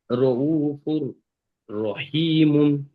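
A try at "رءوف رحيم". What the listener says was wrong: মাশাআল্লাহ, খুব সুন্দর হয়েছে।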